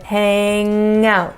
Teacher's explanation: tongue is going to close the airway through your mouth and the air is going to go out through your nose